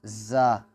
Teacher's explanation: زا کی جو مخرج ہیں یہ زبان کی جو سیڈ ہے، کنارے ہیں، یہ جب اوپر والے داڑوں کے ساتھ ٹکراتے ہیں تو اس سے حرف زا ادا ہوتی ہے